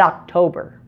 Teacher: only the first Oh is pronounced with the short o · And notice in October that only the first O is pronounced with a short O. The second O is pronounced with a long O, a different sound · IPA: /ɑ/